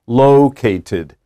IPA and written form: ˈloketɪd (located)